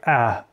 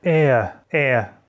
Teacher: если упрощённо, то у американцев это читается уже не как /æ/, а как /ɛə/ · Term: æ-raising